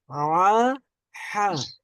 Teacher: হলকের মধ্যখান থেকে আমরা উচ্চারণ করব আইন হা